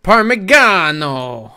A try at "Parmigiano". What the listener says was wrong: Nope, soft G.